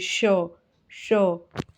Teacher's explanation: जब आप श का उच्चारण करेंगे तो तालू से करना है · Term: तालव्य